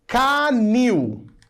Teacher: A última sílaba é a tônica, termina com IL e ela é uma oxítona.